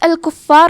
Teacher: کلمت الکفار میں حرف الفا پہ تشدید ہے، تو ہم 2 حرف کے برابر فا کو پڑھیں گے، کیونکہ تشدید کی اصلیت 2 حرف ہے. جیسا کہ یہاں حرف الفا ہے تو یہ 2 فا ہے، فا ساکن اور فا متحرک.